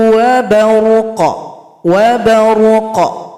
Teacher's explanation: qafnya disukunkan, ada bunyi pantulan, bunyi qalqalah.